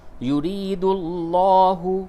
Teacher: یا مدہ ہے، اس کو تھوڑا سا کھینچیے اور را کو باریک کیجیے اور اس لام کو پڑ کر کے پڑھیں۔